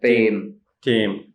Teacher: It's the Vietnamese T. It's not aspirated. You don't need to aspirate the T.